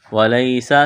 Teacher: سین میں سیٹی کی آواز پیدا کریں گے